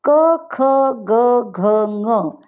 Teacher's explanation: आपले उच्चार जेव्हा आपण करतो तेव्हा तो वर्ण, ते अक्षर परावाणीपासून निर्माण होऊन वैखरीपर्यंत येताना मुखात, कंठात आपटतो. क, ख, ग, घ, ङ हे कंठात आपटतात, म्हणून त्यांना कंठ्य म्हणतात.